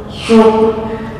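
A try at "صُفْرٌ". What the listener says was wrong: Ini masih tercampur dengan shin. So, si, su, as. Sofer. Sod sama fa. Karena ketika digabung ntar fa berubah jadi p.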